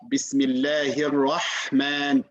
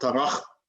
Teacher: Ha and Kha, both of them are from the throat, and they're close to each other. So we need to make sure to separate between the two letters, okay?